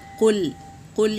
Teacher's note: یہ قاف پر ہے تو اسے موٹا پڑھیں گے اور اونچا پڑھیں گے